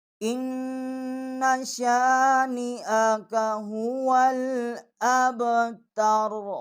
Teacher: اس کے اوپر زبر ہے، را اس کے اوپر پیش ہے، اب را کا جو پیش ہے ہم اس کو نہیں پڑھیں گے کیونکہ یہاں ہم وقف کریں گے